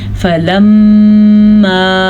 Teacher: فَلَمَّا غنہ میم کے اوپر شد آ گئی ہے